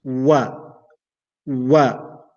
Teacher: So I start the pronunciation of waw while my lips are round, and then I open it.